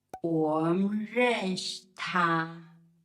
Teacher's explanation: So we drop the final sounds in 我们 and 认识. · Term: elision